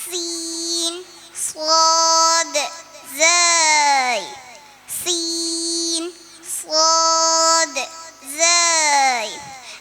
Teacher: രണ്ടു പല്ലിന്റെയും ഇടയിലൂടെ വരുന്ന അക്ഷരം സീൻ സ്വാദ് സൈ സീൻ സ്വാദ് സൈ ഇവ ഇടുങ്ങിയ സ്പേസിലൂടെ ശക്തമായി കാറ്റ് വരുമ്പോൾ ഉണ്ടാകുന്ന മൂർച്ചയുള്ള ശബ്ദമാണ് ഈ മൂന്ന് അക്ഷരങ്ങൾക്കും